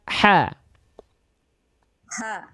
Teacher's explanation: Al-ha tepat dari bagian tengah tenggorokan, nafasnya berbisik.